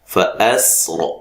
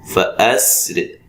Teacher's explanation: اس کو آپ موٹا بھی پڑھ سکتے ہیں را کو، اور باریک بھی پڑھ سکتے ہیں · فَأَسْرِ یہ میں نے موٹا کیا ہے، فَأَسْرِ یہ باریک ہوا ہے